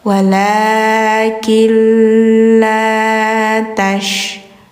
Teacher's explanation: Wala killa tash'urun, shashishu, tash, ada menyebar udara, angin, tafashi namanya ya.